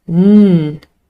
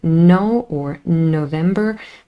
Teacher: the nasal n in no or November makes contact with the alveolar ridge